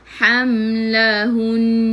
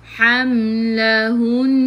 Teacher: Ham mim ada sukun, jelaskan mim izhar syafawi. Lahun bila berhenti kena dengung sebab nun ada sabdu.